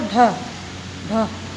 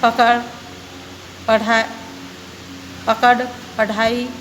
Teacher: इनका प्रयोग शब्द के मध्य या अंत में होता है, या तो इनका उपयोग शब्द के या तो फर्स्ट में होगा या फिर अंत में, यानी मध्य में होगा या अंत में, शुरू नहीं होते हैं इससे, इससे कोई भी शब्द शुरू नहीं होता है ढ से और ढ से। इनका उच्चारण करते समय जीभ झटके से ऊपर जाती है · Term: उक्षिप्त वर्ण